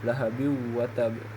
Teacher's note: Huruf wau yang harus dibaca melebur dengan huruf sebelumnya. Ya, di situ huruf ba mempunyai ee kasratain dan bertemu dengan salah satu huruf idgham ghunah yaitu wau. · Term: idgham bighunah